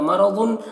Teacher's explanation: रॉ को पुर पढ़ेंगे और ज़ाद को पुर पढ़ेंगे और यहाँ पर या है तो इदगाम नाक़िस होगा, तनवीन को या से मिलाकर गुन्ना के साथ पढ़ेंगे।